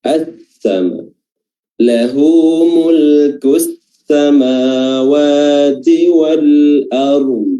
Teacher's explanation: Kita baca idgham karena di sini huruf lam bertemu dengan huruf sin, sehingga huruf lamnya tidak dibaca lam lagi tapi langsung melebur ke huruf sin, sehingga huruf sinnya bertasydid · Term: idgham asy-syamsiyah